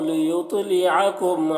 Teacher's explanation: لیطلعکم تو کو پر پڑھنا ہے، حروف مستعلیہ میں سے ہے، اور تا میں قلقلہ کریں گے کیونکہ حروف قلقلہ میں سے بھی ہے